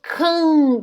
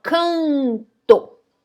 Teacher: Então, olha só, K, aí o A, na verdade, ele vai ser nasal. Por quê? Porque a letra N tá representando a nasalidade dele.